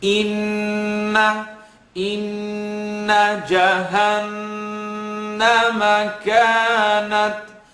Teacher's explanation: let the sound vibrate in the nasal cavity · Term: noon shadda